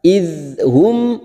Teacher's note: mim sukun bertemu ain, kita baca jelas tanpa mendengung